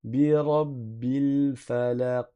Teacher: Et vous avez entendu, j'ai fait rebondir le son après le qaf. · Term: qalqalah